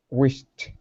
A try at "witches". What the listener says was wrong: A ch, witch. Okay, don't worry about a T, okay? The T is not going to make a sound, okay? So it's just the CH sound that we're working on. Ch, which.